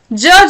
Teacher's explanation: ज जो है वो अल्पप्राण है और सघोष है